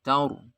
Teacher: Ro-nya karena diwakafkan sehingga ro-nya disukun, jatuh setelah fathah. Maka dibaca tafkhim, tebal ro-nya ya.